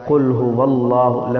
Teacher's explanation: لفظ اللہ کو موٹا کر کے پر کر کے پڑھتے ہیں